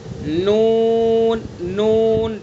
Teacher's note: زبان کا کنارہ ایک ناب سے لے کر دوسرے ناب تک اور اوپر کے دانتوں کے مسوڑے.